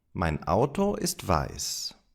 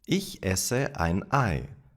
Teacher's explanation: I did not connect the vowels to the previous words.